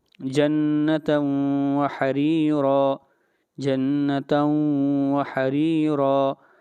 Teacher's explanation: یہاں پر تنوین کے بعد واو ہے، اس لیے یہاں پر ادغام مع الغنہ ہوگا۔